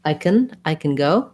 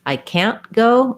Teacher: I can go, really short, almost no vowel, means it's can. I can't go, a little bit longer with the a vowel. But a stopped T, that's going to be your can't.